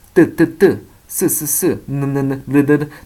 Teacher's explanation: 잇몸 소리는 윗니의 그 끝에 보면 거기 막 부딪히거든요. 혀가. 그래서 뜨, 쓰, 르 다 동일한 위치에 가게 되겠죠.